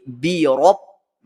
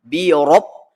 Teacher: Rob baris atas mesti dibaca dengan tebal. Mulut kita kembung ataupun mulut kita agak memuncung sedikit.